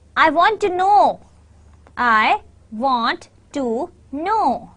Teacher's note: your stress is on want and know